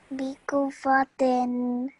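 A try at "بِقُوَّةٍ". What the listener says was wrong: Much better. Excellent.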